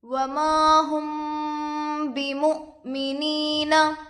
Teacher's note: मीम पर जज़म है, मीम साकिन होगा, मीम साकिन के बाद बा आकर है, इसलिए गुन्ना के साथ इक्फ़ा होगा, इसको इक्फ़ाए शफवी कहते हैं। बा पर ज़ेर की हरकत है, जल्द पढ़े। · हमज़ा पर जज़म है, हमज़ाए साकिना होगा, हमज़ाए साकिना के पढ़ने में छटका होता है